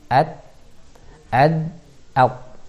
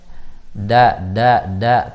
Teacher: Ketika kita katakan ad itu satu makhraj. Jadi ujung lidah kita bertemu dengan tempat tumbuh gigi atas nih, gigi atas yang bagian belakang